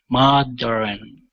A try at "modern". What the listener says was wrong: Okay, so you're adding an extra vowel in between the R and the N. You're saying modern. Okay, instead of modern, it's modern. So you're placing your tongue against the top of your mouth after that R. Modern.